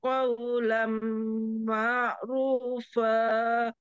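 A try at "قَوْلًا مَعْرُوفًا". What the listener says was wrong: Qawlam ma', jangan ma', ma' langsung masuk di ain. Qawlam ma'rufa.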